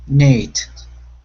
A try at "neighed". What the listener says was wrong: Good, good.